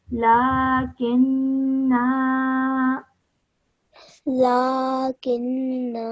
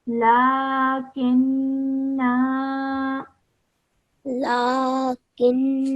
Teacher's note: Just remember to hold the nasal sound in your nose for 2 seconds with the noon